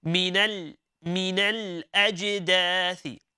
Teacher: when you have the letter Lam with the sakina on top of it, okay, we cannot bounce on the letter. We can't say minale, minale.